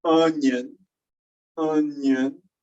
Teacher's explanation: But the idea here is, if you say onion, onion, you get a little bit of nasalization, not as much as you would in French, but you can hear it.